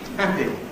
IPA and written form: ˈhæpɪ (happy)